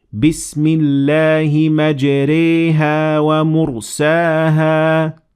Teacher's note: you will do what we call imala, which is not fully pronouncing the alif